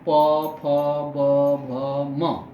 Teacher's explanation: ये ओष्ठ, हमारे होंठ दोनों आपस में खुल रहे हैं और जुड़ रहे हैं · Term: ओष्ठ्य वर्ण